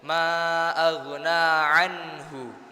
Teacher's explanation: nun sukun itu dibacanya izhar. Gampangannya itu jelas, Pak, Bu. Jadi jelas enggak boleh mantul, enggak boleh samar, ya. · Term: idhar